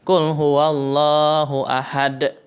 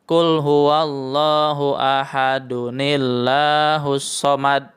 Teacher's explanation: Jadi cara membacanya, nun setelah dal ditambahkan kasroh. Kemudian alif lapad Allah itu tidak dibaca harkatnya. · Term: wasol